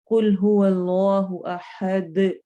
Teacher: دال کی double sound ہے نا اور حرکت ہے اور ایکو ساؤنڈ آتی ہے، اس کو قلقلہ کہتے ہیں